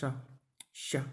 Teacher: सीटी वाला शाह, शाह इस तरह बोला जाता है तो वो तालु से ही बोला जाता है